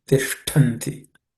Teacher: The Ish is cerebral sh, and Tha is again aspirated because it's a second letter. In the Ta varga or Ta class of consonants, it has to be Tishtanti.